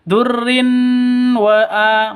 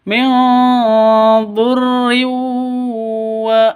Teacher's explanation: Min dhurri. Di sini ada tanwin bertemu dengan wawu. Cara bacanya masuk ke wawu. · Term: idgham bigunnah